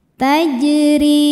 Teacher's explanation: Huruf ro dibaca secara tarqiq sebab ro harakatnya di bawah kasrah. Cara membacanya roho dibaca dengan tipis.